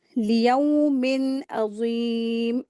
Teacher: लियौमिन अज़ीम, मीम मीम के नीचे ये तनवीन है और तनवीन के बाद ऐन लेटर आया है तो यहाँ पर इज़हार का रूल अप्लाई करेंगे। नून की आवाज़ को ज़ाहिर करके पढ़ेंगे।